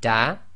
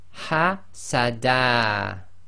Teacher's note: from the tanween you drop out the noon sakin. So you're left with, in this case, the dal with fatha. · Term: stopping on fathatain